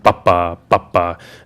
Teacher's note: it comes from the Hungarian stress on the first syllable of words